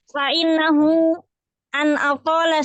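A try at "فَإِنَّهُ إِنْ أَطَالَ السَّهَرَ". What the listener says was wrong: Bukan an. In.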